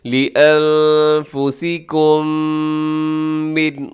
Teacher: میم ساکن کے بعد پھر میم آ گئی تو آپ نے کیا کرنا ہے؟ یہاں ادغام کریں گے جسے ادغام شفوی کہا جاتا ہے۔